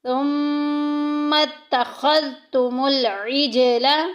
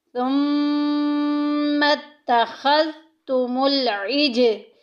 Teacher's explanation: ثم میم مشدد آ گئی، غنہ کریں گے، ناک میں آواز لے کے جائیں گے۔ پورے قرآن پاک میں جدھر جدھر بھی نون کے اوپر شد آ جائے گی یا میم کے اوپر شد آ جائے گی وہاں ہم غنے کے ساتھ پڑھیں گے۔